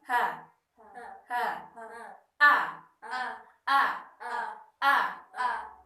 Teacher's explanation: Jadi ha dan a itu tempat keluarnya ada di tenggorokan bawah.